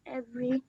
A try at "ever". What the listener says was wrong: ever, ever. There is no Y at the end.